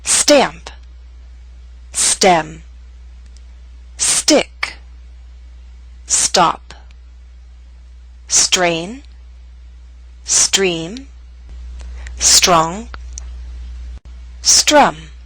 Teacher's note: all these words begin with st or Str so be careful not to release a strong puff of air